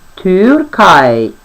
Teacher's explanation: U umlauts viens pats tiek izrunāts kā Ü, un tā ir skaņa starp U un I.